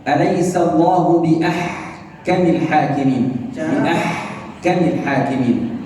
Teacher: Huruf H itu keluar daripada tengah tenggorokan. · فالحاء تخرج من وسط الحلق، · Maka saya mengucapkan H dari tengah tenggorokan. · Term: H sukun